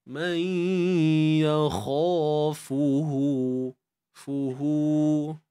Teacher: Okey, kat sini ha bari depan muncunglah, fa bari depan memuncung, cuma kat sini kena panjangkan maksilah qasirah, dua harakat je.